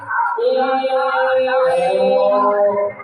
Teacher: जब ओ शब्द बोल रहे हैं इसमें 3 मात्रा का समय लगेगा